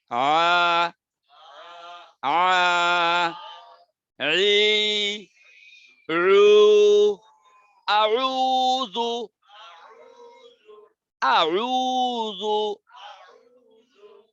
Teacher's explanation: আইনের উচ্চারণ, আইন গলার মাঝখানে একবার ধরেন, ধরে বাতাস ছাড়া পড়েন।